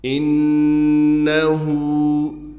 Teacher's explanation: انہو، نون پر تشدید ہونے کی وجہ سے غنہ کیا جائے گا، ہا پر الٹا پیش ہونے کی وجہ سے ہا کو ایک الف کی مقدار کھینچیں گے